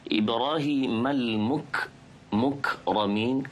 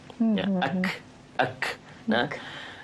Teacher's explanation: Kaf itu dia ada hamasnya. Ak. Dhaifi Ibrahim al-mukramin. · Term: makhraj ka